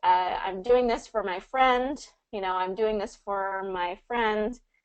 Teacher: So it does get reduced quite a bit from for to fur. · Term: common reduction